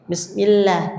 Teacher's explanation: Ketika diawali kasrah dibaca tipis.